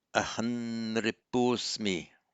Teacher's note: the final M of aham would be written as anusvara, but pronounced as an N because of the next word beginning with an N